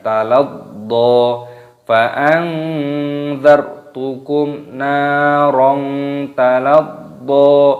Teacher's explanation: do-nya di sini tasdid, dibaca ditekan, diidghamkan, dimasukkan